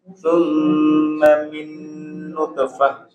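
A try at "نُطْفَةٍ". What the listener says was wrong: Huruf po itu huruf yang tebal ya. Nutfah, nutfah. Summa min nutfah.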